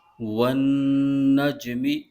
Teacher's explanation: اس کلمے میں نون مشدد ہے، اس میں غنہ ہو رہا ہے اور جیم میں قلقلہ بھی ہو رہا ہے